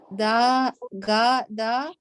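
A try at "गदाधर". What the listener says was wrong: The D is with the H.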